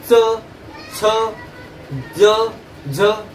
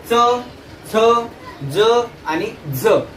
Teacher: बघा एकदा उच्चार करून, च, छ, ज आणि झ. तर या 4ही व्यंजनाचा उच्चार करताना टाळूचा तर संपर्क होतोच, परंतु थोड्याफार प्रमाणात दाताचा सुद्धा संपर्क होतो. त्यामुळे या 4 वर्णाला काय म्हटलं जातं तर दंत तालव्य वर्ण सुद्धा म्हटलं जातं.